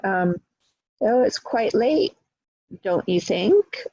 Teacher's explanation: by raising the voice at the end, we're creating a question. And so we usually fall on sentences, so fall at periods and fall at commas, and rise on question marks, particularly in yes/no questions. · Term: tag questions